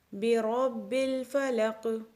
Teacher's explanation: یہاں پہ قاف پہ جزم پڑھیں گے وقف کی صورت میں، تو ہم قاف کو قلقلہ کریں گے کیونکہ قاف حروف قلقلہ میں سے ہے۔